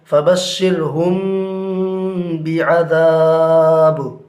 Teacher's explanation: میم ساکن کے بعد با آ رہا ہے، لہٰذا غنہ کے ساتھ اخفا ہوگا